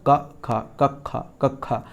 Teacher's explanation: ये जीव का जो मूल है, यानी कि ये कंठ से बोले जा रहे हैं। किससे बोले जा रहे हैं, ये कंठ से बोले जा रहे हैं। · ये जो का और खा है ये जीवा मूल्य कहलाते हैं